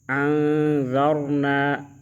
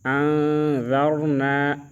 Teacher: ان میں اخفا کریں گے، را کو پر پڑھیں گے، موٹا پڑھیں گے